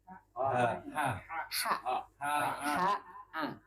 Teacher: tempat keluarnya di tengah-tengah tenggorokan